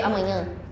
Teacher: we have the A with tilde, which makes it a nasal sound.